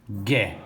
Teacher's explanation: Eu ouço o som Gué. Não ouço o som do U, né? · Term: dígrafo